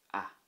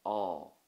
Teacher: so it would be a short sharp ah but when you put the á there you will see that it becomes awe